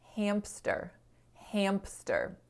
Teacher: when we're saying hamster right between that m and s our vocal folds go from vibrating to no longer vibrating because um the m is voiced and thus the s sound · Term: co-articulation